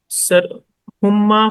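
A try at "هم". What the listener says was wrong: ہاں، اس میں نہیں ہما کے ہم. نہیں ہما ہما نہیں، میم تو ہے لیکن ہما میں نا میم کے بعد الف بھی آتا ہے.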